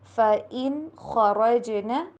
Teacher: خا اور را دونوں کو موٹا کر کے پڑھیں گے